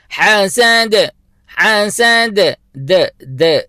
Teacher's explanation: اور آخری جو حرف ہے وہ ہے دال. دال کے اوپر ہم نے قلقلہ کرنا ہے، جھٹکے کی آواز دینی ہے، اور ہم پڑھیں گے حسد حسد.